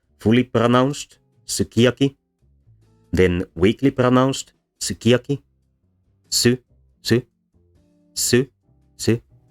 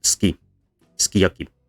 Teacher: eventually the u disappears entirely and the first two syllables merge into ski, skiyaki